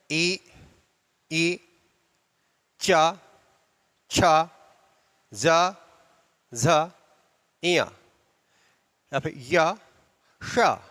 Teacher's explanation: इनके उच्चारण में तालु का पूर्णतः योगदान है, इसलिए इन्हें तालव्य वर्ण कहते हैं।